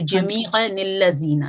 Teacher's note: جو اس تنوین کی نون ساکن ہے، اس تنوین کا جو نون ساکن ہے وہ کسرہ لے لیتا ہے، مکسور ہو جاتا ہے